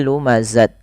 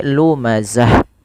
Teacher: Ta marbutah apabila berada di akhir bacaan ketika kita waqaf atau berhenti, maka ta ini diganti bunyinya menjadi huruf ha yang dimatikan. Jadi tidak dibaca lagi lumazat, tapi lumazah berubah menjadi bacaan ha yang disukunkan.